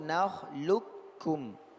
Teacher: Dia menjadi kaf. Ya, huruf qaf menjadi huruf kaf bertasydid. Ini yang muqaddam. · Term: idgham